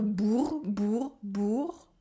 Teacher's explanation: The first one is bourg with the ou sound and a French R